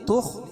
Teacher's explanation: خا حروف مستعلیہ میں سے اس کو پور پڑھیں گے